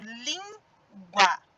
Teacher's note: língua é o som mais forte foi da sílaba lin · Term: sílaba tônica